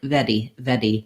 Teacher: It's like a rolled R, but we don't repeat it. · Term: flap